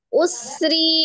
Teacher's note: sinnya asofir dialirkan suaranya nafasnya juga mengalir Usri rinya karena ro kasr dibaca tarqik atau tipis Yusron sinnya